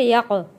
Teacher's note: قاف کو موٹا پڑھیں گے اور قلقلہ ادا کریں گے۔